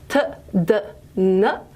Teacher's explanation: they're all involving the tip of the tongue up against the alveolar ridge